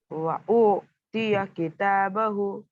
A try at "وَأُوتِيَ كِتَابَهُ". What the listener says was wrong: جھٹکا نہیں دیں گے. کھینچیں گے. وہ مت ہے. وہ سیکنڈ سے پہلے پیش ہے. کتابہ ہو کو بھی کھینچیں گے.